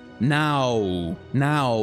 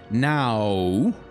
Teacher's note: This is why a W is called a double U, by the way, is because at the end of a word like now, it actually does sound like an ooh sound, like now. So na starts very open.